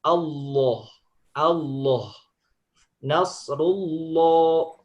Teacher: lam itu aslinya hurufnya tipis dia menjadi tebal ketika di lafadz Allah saja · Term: Allah tebal